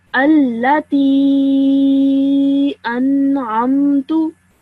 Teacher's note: this ya has a sukoon and then it also has a mad saghir. So you stretch the sound for 3 seconds minimum.